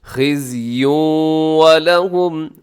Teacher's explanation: دنیا، قنوان، سنوان، بنیان، یہاں پہ اپنے غنہ نہیں کرنا، یہاں پہ ادغام نہیں ہے، بلکہ ظاہر کر کے پڑھنا ہے فی الدنیا، ایسے خزی ولہم، خزی زا ہے، زا میں سیٹی ہوتی ہے، اور آگے تنوین کے بعد واو ہے ولہم کے شروع میں، تو یہاں ادغام کیجیے گا غنے کے ساتھ